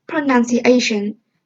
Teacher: when you say pronunciation the secondary stress is on the second syllable